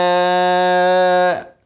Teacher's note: مد واجب متصل المره دي متصل لان حرف المد هنا الالف اهو والهمزه في نفس الكلمه